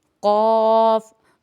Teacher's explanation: قاف موٹا حروف ہے، منہ گول کر کے ادا کیا جائے گا